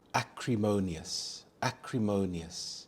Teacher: The stress is on the third syllable mo, acrimonious.